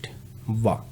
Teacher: जब भी हम व का उच्चारण करते हैं तो हमारा स्पर्श जो है क्या? दांत से होता है। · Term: दंतोष्ठ